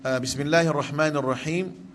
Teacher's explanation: Pastikan ha pedas dua-dua di sini.